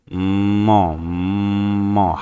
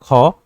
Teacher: फिर आप मौ बोल के देखो। मौ, मौ, हल्की सी वाइब्रेशन फील हो रही है मौ बोलने में कंठ में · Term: घोष वर्ण